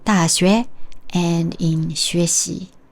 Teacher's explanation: the tone of 学 remains the same second tone